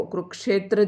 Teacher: इस क्ष शब्द को कुरुक्षेत्र जैसे बोलते हैं तो इसमें क और श दोनों का उच्चारण होगा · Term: संयुक्त व्यंजन